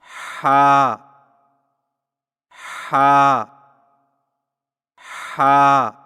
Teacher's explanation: ہا کی ادائیگی میں زبان کی جڑ کو حلق کی طرف مضبوطی سے دباتے ہوئے باریک اور رگڑ کھاتی سانس میں پڑھیں